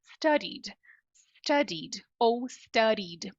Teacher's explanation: esse D pode se transformar no R de arara